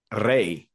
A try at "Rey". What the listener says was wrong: that was an unnecessary roll because Rey only has one R, and you're only supposed to roll your R when there's a double R,